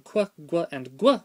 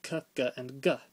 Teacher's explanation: In Sanskrit, they started pronouncing qu, gu, and gu without the w after them, merging them with the normal k, g, and g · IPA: /*kʷ/, /*gʷ/ et /*gʷʰ/